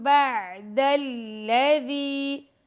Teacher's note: دال کے ساتھ یائے مدہ آ رہا ہے تو اس کو ہم 2 سیکنڈ تک لمبا کریں گے دال کو